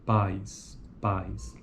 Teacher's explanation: Então, ao representarmos o ditongo AI das palavras pais, da palavra pais, estamos expressando que ocorre um movimento contínuo e gradual da língua entre duas posições articulatórias vocálicas, de A até I